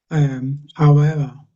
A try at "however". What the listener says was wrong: it just sounds a bit weak in the middle. I think the how is getting is pretty good, I'd say, but when you get to the ever, it just sounds ooh, it just sort of it sort of disappears a bit. So maybe just say how,